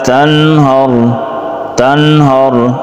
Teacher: اظہار نون ساکن کے بعد ہا حروف حلقی میں سے اظہار کریں گے بغیر غننے کے